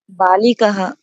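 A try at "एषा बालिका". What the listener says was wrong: বালিকাহা না, বালিকা হবে।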